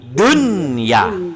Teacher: Sebab nun sambung dengan ya, jadi dia bukan duya, tapi dunya. Nun dibaca jelas. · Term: izhar mutlak